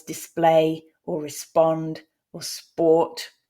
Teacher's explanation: p isn't aspirated in sp clusters